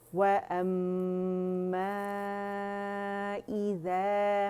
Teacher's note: ہم نے مد منفصل کو 4 to 5 کاؤنٹس کرنا ہے